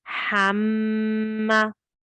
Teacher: the emphasis is on the mushaddad letter. That's the letter that you're going to put the pressure on when we recite it.